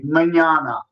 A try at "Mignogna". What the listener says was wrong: Mignogna. See, the middle part's the important part. Yeah, like you own something. Not like you're yawning.